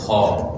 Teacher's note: حلق کے شروع والے حصے سے آواز نکالنی ہے اور اس کو ہمیشہ موٹا کر کے ادا کرنا ہے